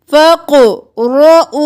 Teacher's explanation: क़ाफ़ क़लक़ला मोटा रो भी मोटा